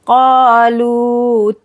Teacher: क़ा, लू को खींचना है, यहाँ पर वाव मद हो रहा है